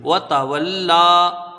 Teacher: لام میں کھڑا زبر ہے، ایک الف کی مقدار اس کو کھینچ کے پڑھیں گے و تولا. ٹھیک ہے، یہ یا جو ہے یہاں الف سے یہ بدلی ہوئی ہے و تولا.